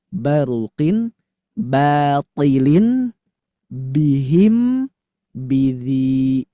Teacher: jadi 4 lafad ini harus dibaca tipis